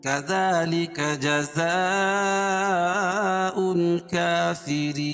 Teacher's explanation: الکافرین را باریک پڑھی جائے گی